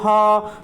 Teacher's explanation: हा का उच्चारण किससे बोला जाता है बेटा, कंठ से बोला जाता है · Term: ऊष्म व्यंजन